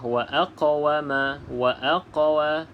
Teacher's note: Qalqalah kena lantunkan sedikit pada huruf q